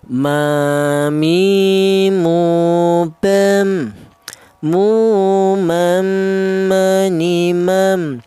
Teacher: Huruf mim dan huruf ba ini dihasilkan dari kedua bibir yang rapat.